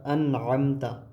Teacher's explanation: ناک میں آواز نہیں لے گا یہاں پر، تو اسی طریقے سے پڑھنے کو کہتے ہیں ہم اظہار